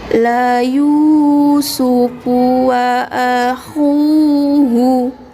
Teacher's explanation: dhammah yang bertemu dengan waw sukun kita panjangkan 2 harokat